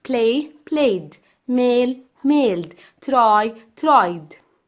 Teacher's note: the ed in the first column sounds like d because it's preceded by a voiced sound